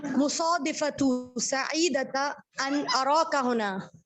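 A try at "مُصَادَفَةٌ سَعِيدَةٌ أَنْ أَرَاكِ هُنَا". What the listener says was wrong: देखिए दाल पे मैंने ज़बर लगाया इसीलिए। मुसादफतुन सईदतुन अन अराकी हुना, बोलें। मुसादफतुन सईदतुन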